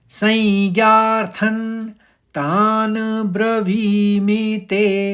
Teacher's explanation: तो व वाला शब्द जो है दीर्घ बोला जाएगा और म वाला शब्द जो है वो ह्रस्व बोला जाएगा यानी धीरे से बोला जाएगा। · तो इस पूरे चौथे चरण को अगर आप सुनेंगे तो ये इस तरह से बोला जाएगा, संज्ञार्थन तान ब्रवीमि ते को पूरा बोलना है, मीच हल्के से आएगा और वी बड़ा जोर से बोला जाएगा, मतलब दीर्घ बोला जाएगा